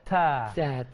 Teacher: Masalah huruf ta ialah orang kita bila nak menyebut huruf ta dia suka melebihkan sifat hamas itu.